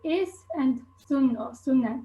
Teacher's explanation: we use unvoiced /s/ in all positions